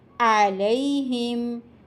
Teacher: یہاں عین گلے کے درمیانی حصے سے ادا ہوگی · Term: وسط حلق